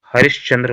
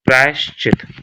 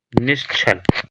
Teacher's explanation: विसर्ग के बाद चा छा जो है वो तालु से है, वो तालु से है, तो सा का उच्चारण भी तालु से है।